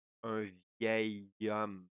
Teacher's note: when you put a H that we don't hear, it's called a H muet, the liaison will be with the O that come after, that is a vowel